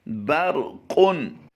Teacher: اس وقت آپ اپنی اسکرین پر جو لفظ دیکھ رہے ہیں ان کے بارے میں سمجھیے کہ را پر اگر زبر ہو را کو پر کریں گے، لیکن یہاں پر ایک اور قاعدہ یہ ہے کہ را ساکن سے پہلے حرف پر اگر زبر ہو تو بھی را کو پر پڑھا جاتا ہے۔